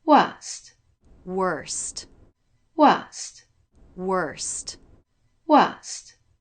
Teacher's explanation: But in British English, the R sound isn't included.